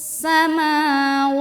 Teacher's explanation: maanya panjangin dua harakat